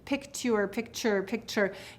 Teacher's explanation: T and then say it faster and faster picture picture picture you hear that t changing into a CH sound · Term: assimilation